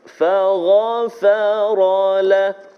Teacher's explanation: Dan juga faghfara lah, tebal pada ghain, fagha. Kemudian ra tebal baris atas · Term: tafkhim